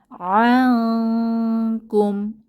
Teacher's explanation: নুন সাকিনের পরে ইকফা বা গোপন করার যে হরফ কাফ এসেছে তো আমরা এখানে গুন্নাহ সহ গোপন করে পড়বো